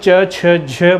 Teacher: वे ध्वनियाँ जिनके उच्चारण में जीभ उच्चारण स्थल को स्पर्श तो करती है लेकिन हवा को भी संघर्ष करना पड़ता है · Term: स्पर्श संघर्षी